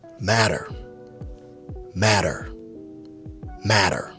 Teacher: Remember the American accent when it comes to the two T sounds, it is flipped into a D sound, a soft D sound.